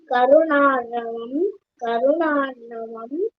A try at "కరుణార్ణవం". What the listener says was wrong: కరుణార్ణవం కరుణార్ణవం. రా కింద అణా ఒత్తుండాలి.